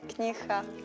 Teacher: She pronounces the g sound a little bit h.